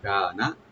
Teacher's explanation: থাকবে, মিম ওপেন, নুন সাকিন এখানে আমরা ইখফা করব, ওয়ামান কানা, কাপটা একালিফ টানবেন, নুনে কোনো টান হবে না , কানা, খেয়াল রাখবেন এখানে নুনে যদি একটু টানেন এটা মিনিংটা